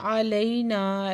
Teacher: لئی پہ یائلین ہے، نرمی سے پڑھیں گے، اور نا پہ علی مدہ، دو حرکت کھینچ کے پڑھیں گے۔